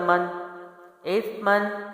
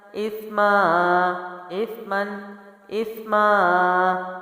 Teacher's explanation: پہلے میں نے اس کو من ادا کیا، اس کے بعد وقف میں میں نے اس کو ایک مد لمبا کر دیا